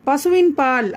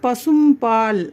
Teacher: இதோட எழுத்து ஒன்னுதான் ப அதாவது இக்லாப் அப்படின்ற வார்த்தையோட கடைசி எழுத்துன்னு இதை நீங்க ஞாபகம் வச்சுக்கலாம். நூனுக்கு அடுத்து ப வந்துச்சுன்னா நூன் சாக்கினாவை மீம் சாக்கினாகவாக மாற்றி உச்சரிப்பதுதான் இந்த சட்டம்